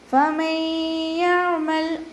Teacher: ഇദ്ഗാം ബിഗുന്ന ഒന്നയോടുകൂടി ലയിപ്പിച്ച് കൊടുക്കുക